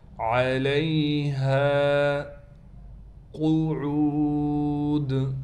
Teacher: قاف کو موٹا کر کے پڑھیں گے، عین کے بعد واو ہونے کی وجہ سے عین کو ہم ایک الف کی مقدار کھینچیں گے. دال پر وقف کی حالت میں قلقلہ کیا جائے گا.